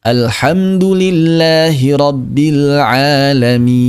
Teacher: Tidak boleh ada suara gunnah, suara rongga hidung, tidak boleh.